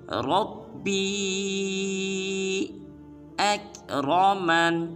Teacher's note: اس کے بعد با کے بعد یا ہے، اس یا کے اوپر چھوٹی مد ہے، یا کو 3 الف مقدار لمبا کریں گے،